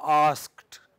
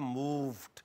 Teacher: when it is preceded by a voiceless consonant, then it is realized as t.